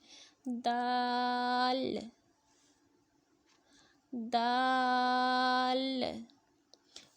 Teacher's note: زبان کی نوک جب اوپر کے اگلے دو دانتوں کی جڑ کی طرف والے آدھے حصے سے لگے گی تو دال ادا ہوگا.